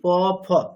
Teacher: দুটো অষ্ঠ বা দুটো ঠোট পুরোপুরি স্পর্শ করলে একটা পূর্ণ ফকার বলতে পারছি আমরা